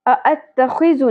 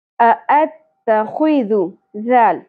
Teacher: ذال نرمی سے ادا کرنا ہے, شدت اور سیٹی نہیں ہونی چاہیے